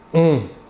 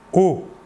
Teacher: Ce phonème est un nasal, c'est-à-dire que si vous positionnez votre doigt sous le nez, vous devez sentir passer de l'air. On. Alors que pour le O, qui n'est pas nasal, vous ne sentirez pas d'air passer sur votre doigt.